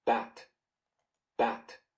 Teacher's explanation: not aspirated it is also it doesn't have an audible release this word most of the time most people pronounce it unreleased